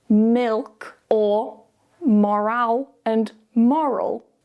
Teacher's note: the dark L appears after a vowel sound, usually towards the end of a word,